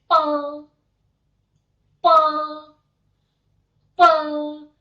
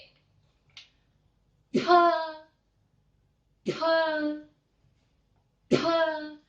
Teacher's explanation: Karena tidak ada udara yang kita keluarkan. Tapi kalau P, itu harus ada udara yang kita letupkan keluar.